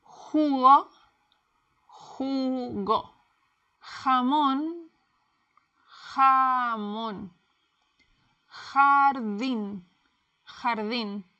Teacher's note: J, el sonido fuerte. It's like a English H, but stronger, coming from the throat. Imagine fogging up a window, or like a cat when it's angry.